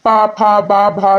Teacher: एक होट दूसरी होट से टकरा रही है यानी ये ओस्ट हो गया